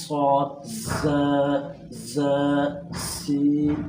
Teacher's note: स्वाद को हमने जब भी अदा करना है तो इसके अदा करने के साथ साथ हमने सिटी वाली आवाज़ भी निकालें